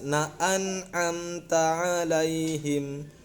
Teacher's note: Izhar itu jelas. An'am, nun mati ketemu dengan a itu izhar hukumnya, maka bacanya harus jelas.